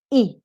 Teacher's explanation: it's a closed front vowel your lips are spread but it's something in the middle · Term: neutral e